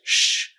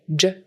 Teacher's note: the sounds in the middle top of your mouth would be CH, like ch, SH, sh, J, j, and ZH, zh